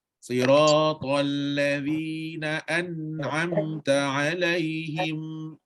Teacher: Nun dengan mim tak boleh tersekat Sebab Dia ada dengung dia ada dengung kat hidung Tu hidung tu akan lepaskan dia kalau siapa sekat huruf mim